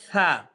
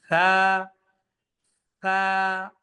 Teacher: সা হবে একদম সফট, নরম, জিহ্বার আগা থেকে।